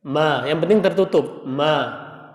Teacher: Jadi huruf mim ini pertemuan bibir atas dengan bibir bawah.